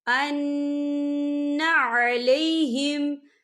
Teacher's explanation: جزاؤہم ان علیہم، یہاں دیکھیں ان، یہاں نون مشدد ہے تو یہاں پر غنہ ہوگا